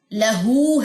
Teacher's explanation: لا باریک ہے اور اس کو لمبا نہیں کرنا، حرکت کی وجہ سے اللہ نہیں پڑھنا یا لا نہیں پڑھنا.